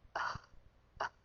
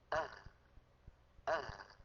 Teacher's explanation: لما تقول أه ما الاحتكاك ضعيف جدا، بينما لما نقول أه أه فالوتران قريبان من بعضهما والهاء صوتها قوي